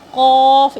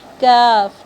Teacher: قاف، اسے موٹا کر کے پڑھنا ہے اور اسے بالکل سمپل طریقے سے، کاف